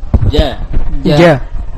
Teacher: Jahru yakni tidak keluar atau tidak mengalirkan nafas, syiddah ini kuat, dan mustafilah yakni tipis. Ja. Baik, usahakan tidak ada aliran nafas. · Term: jahru wasyiddah